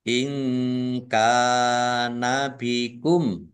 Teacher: Nun sukun bertemu dengan huruf kaf bacaan ikhfa dibaca samar-samar.